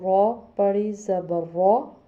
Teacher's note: زبر آ رہی ہے را کے اوپر تو ہم اس کو موٹا پڑھیں گے، یعنی موٹا پڑھنے کی جیسے آپ کے منہ بھرا ہو تو را پڑی زبر را، قاف پڑی زبر قا، قاف دو نقطوں والا ہے، یہ بھی حلق سے پڑھا جاتا ہے اور پلس یہ موٹا پڑھا جاتا ہے۔